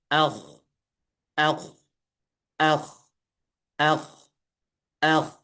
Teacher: dia isti'la, maka pangkal lidahnya terangkat. Kalau pangkal lidahnya terangkat, maka nama sifatnya adalah isti.